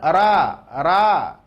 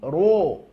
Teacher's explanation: huruf tebal bunyi vokalnya adalah huruf o. Bukan ra, tapi ro. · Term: ro tebal